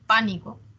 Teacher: El acento está en pa.